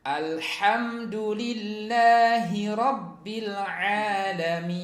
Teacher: lamnya itu bukan termasuk huruf qalqalah ya, sehingga jangan dipantulkan